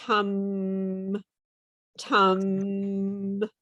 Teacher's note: can you feel the vibration on the m